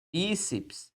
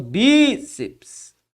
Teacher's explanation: Então, perceba que em todas estas palavras, o que eu tive foi a posição da sílaba tônica na penúltima sílaba.